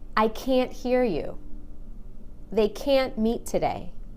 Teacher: but when I say can't I stressed that a and make it really long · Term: stressed a